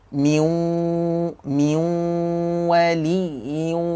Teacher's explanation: Bunyi nun tu memang tak ada terus. Dia dimasukkan ataupun digabungkan ke dalam huruf waw selepasnya.